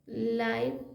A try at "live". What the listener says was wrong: लाइव लाइव या लीव? लीव लाइव भी पढ़ते हैं लेकिन यहाँ पर लिव पढ़ा गया है, लिव।